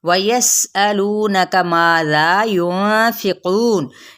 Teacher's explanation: सीन पे सीटी को वाज़े करेंगे, हमजा को सख्ती से अदा करेंगे